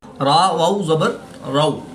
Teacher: واو ساکن سے پہلے حرف پر زبر ہے تو یہاں پر واو لین ہوگا، اس کو لمبا نہیں کریں گے